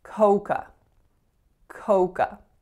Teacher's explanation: the first vowel is Oh the second vowel is a schwa